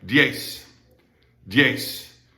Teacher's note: that Z at the end is pronounced just like the S in sister